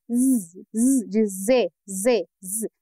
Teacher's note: Não precisa forçar, não precisa colocar pressão. Eu quero que você considere um fluxo de ar saindo bem contínuo no meio dessa consoante